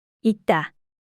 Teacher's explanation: 기역과 디귿이 만남으로 된소리가 나지요